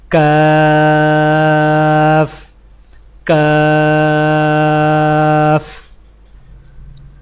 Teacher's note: کاف کی ادائیگی میں زبان کی جڑ کو کوے کے قریب تالو پر لگا کر باریک آواز میں پڑھیں، یعنی کاف کاف۔